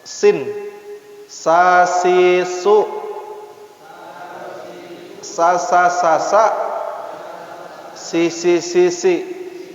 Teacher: Ya, masih di lisan, ujung lidah dihampitkan sedikit renggang ke gigi depan yang bawah